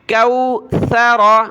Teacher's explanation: یہاں سا پر سیٹی کی آواز نہیں آنی چاہیے جو سین اور صاد پر آتی ہے